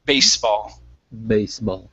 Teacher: Remember, that's an unvoiced S sound.